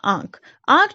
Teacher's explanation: जब हम उच्चारण कर रहे हैं तो इसका मुंह और नासिका दोनों से उच्चारण कर रहे हैं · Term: अनुनासिक